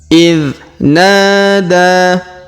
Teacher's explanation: Perhatikan huruf na kita panjangkan 2 harokat karena terdapat alif di depannya